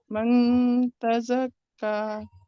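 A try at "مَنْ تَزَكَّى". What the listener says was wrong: अभी भी इजहार का साउंड है. من من تزکا نہیں. دیکھیے آپ من کریں گے اور پھر چاہے کتنا بھی گننا کرے وہ اظہار ہوگا. من تزکا نہیں. من تزکا زبان نون کے مخرج پر نہیں جائے گی.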